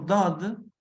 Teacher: oclusiva, dental, sonora, velarizada, que solo existe en la lengua árabe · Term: letra Dod